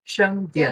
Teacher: Só que o Dian é no quarto tom, tem que falar um pouquinho ah, mais rápido.